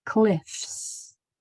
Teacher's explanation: if the letter before it is voiceless like an F it's going to say it's voiceless sound s